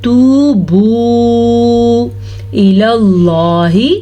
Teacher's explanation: لفظ اللہ کو پر پڑھنا ہے کیونکہ لفظ اللہ سے پہلے زبر ہے۔ اگر لفظ اللہ سے پہلے زبر اور پیش ہو تو لفظ اللہ پر پڑھا جاتا ہے، اگر لفظ اللہ سے پہلے زیر ہو تو لفظ اللہ کو باریک پڑھا جاتا ہے۔